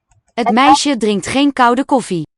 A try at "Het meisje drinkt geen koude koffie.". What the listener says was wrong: Koud, not the L vocalization.